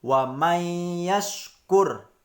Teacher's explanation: huruf nun nya tidak dianggap atau tidak dibaca · huruf nun sukun di sini tidak dibaca atau dianggap hilang, sehingga kita langsung masuk ke huruf ya. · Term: idgham bilagunnah, idgham bila gunah